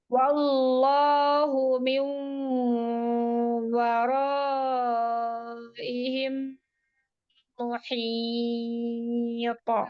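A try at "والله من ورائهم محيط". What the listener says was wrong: Di hamzah kasroh, ayo syiddahnya dijelaskan. Waraihim. Iya, ihim.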